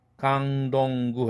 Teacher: 강동구 할 때 강동구 할 때 강 할 때 그는 무성음이지만 덩 할 때 드 사운드는 이미 유성음화됐죠. 응이라는 유성음과 오라는 모음 사이에 꼈으니까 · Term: 유성동화